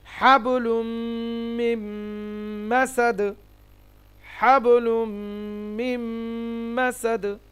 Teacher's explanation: তানবিনের পরে মিম, এখানে গুণনা হবে মিম মাসাদ, মিন মাসাদ না হয় মিম মাসাদ, এখানেও গুণনা হবে